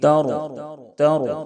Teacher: را ساکن سے پہلے زبر ہے، اس لیے را کو پر کریں گے یعنی موٹا کریں گے، تر تر اس طرح سے را کو موٹا کریں گے۔